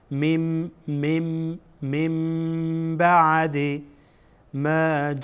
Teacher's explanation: هو هو اتوه الا الذین اتوه بعد اینجا بعد از تنوین بعد از نون ساکن با آمده حرف اقلاب هست اینجا نون را به میم تبدیل میکنیم